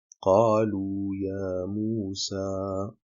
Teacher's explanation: ce alif, c'est un allongement naturel, il n'est pas suivi d'une hamza, ni d'un soukoun, il fait bien partie intégrante du mot, et on l'allonge donc de 2 temps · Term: al-Madd al-Tabi'i